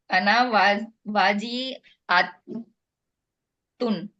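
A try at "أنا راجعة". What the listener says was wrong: रॉजियातुन, रॉ है ना पहले, अना रॉजियातुन।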